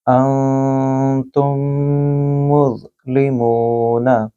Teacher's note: میں نے میم کو بھی لمبا کیا، مونا، کیونکہ میم کے آگے واو ہے جو کہ واو مد ہے، لہٰذا منہ کو بھی لمبا کریں گے۔